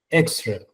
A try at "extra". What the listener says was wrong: Menos, más débil la última. No es extra. Suavecito. De hecho, algunas palabras hasta la puedo como que omitir. Es mejor omitirla, digamos, que marcarla o reemplazarla por un sonido que es suave.